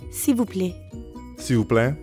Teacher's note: when speakers are in a hurry, that L sound at the end often gets left off.